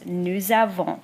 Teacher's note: the S at the end of nous, which normally isn't pronounced, becomes the pronunciation Z in this case. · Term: liaison